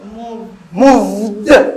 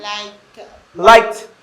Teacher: when I add ed, now I have a t sound. I don't have a d sound.